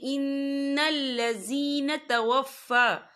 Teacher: فا کے پر کھڑی حرکات ہے تو ہم یہاں 2 یا 3 حرکت کے برابر کھینچ کے پڑھیں گے